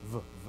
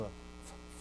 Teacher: there's a sound accompanying, right, the pronunciation, but there's a vibration in the vocal cords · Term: voiced